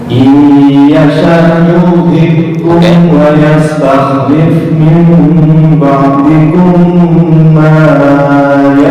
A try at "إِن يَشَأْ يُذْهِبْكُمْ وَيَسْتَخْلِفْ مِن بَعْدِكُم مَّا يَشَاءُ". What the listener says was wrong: Panjangan, 2 harokat aja di ma yasha. Panjangan, 2 harokat. Kurang dengung. Ba'dikum ma yasha'u kama ya, ba'dikum ma yasha.